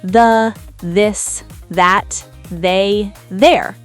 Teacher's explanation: So the, this, that, they, there all have the buzzy vibration sound. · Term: Voiced th, Voiced TH